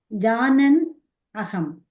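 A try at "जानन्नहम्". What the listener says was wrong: But and the in and a becomes double na there. So Janannaham. You're saying it together, okay?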